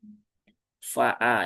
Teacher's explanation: dipastikan fa ya, bukan pa. Ujung lidahnya bertemu dengan bibir bawah ya. Tapi bukan yang di sini ya, bukan yang di luar tapi yang di e di sini ya, di dalam sini faa ya. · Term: huruf fa